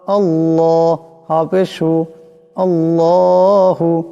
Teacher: আল্লাহ লামকে মোটা করিয়া পড়তে হবে।